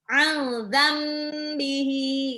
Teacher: Hati-hati waktu nun sukun ketemu ba, itu iklab ditahan lagi dikit.